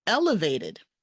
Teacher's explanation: The first syllable gets the stress, elevated, not elevated, elevated.